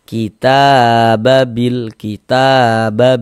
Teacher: Jangan dibaca kita itu kepanjangan. Nah, sekali ayunan saja. · Mad thobi'i panjangnya dua harakat.